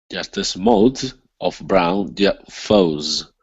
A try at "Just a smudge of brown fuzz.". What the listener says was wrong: Okay. Yeah, you're getting better. Nice job.